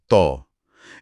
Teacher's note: इसमें पूरा मुंह भर जाता है। जबान की जड़ ऊपर उठती है।